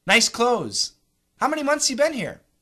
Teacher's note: we can also say nice clothes how many months you been here without the th's